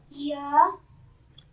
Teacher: Mid tongue raises like e. Ya. Mid tongue raises like e.